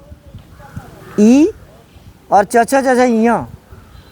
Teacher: इसका उच्चारण तालु से होता है। जीभ जाकर ताल में टकराती है।